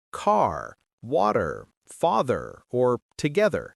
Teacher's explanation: Americans pronounce the final R in words like car, water, father, or together. British English, especially received pronunciation, tends to drop that R when it's at the end of a word. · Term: the R sound